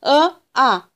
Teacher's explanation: अ आणि आ चा उच्चार करताना आपली जी जीभ असते ती जीभ पडजिभेच्या जवळील कंठाला स्पर्श करत असते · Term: कंठ्य वर्ण